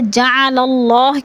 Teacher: اللہ سے پہلے لفظ لام کے اوپر زبر ہے تو اللہ کو پر کر کے پڑھیں گے